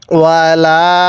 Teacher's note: তাহলে এরপরে ওয়াও জবর ওয়া, লাম আলিফ জবর লা, এই লামের মধ্যেও আমরা 3 আলিফ টান দিব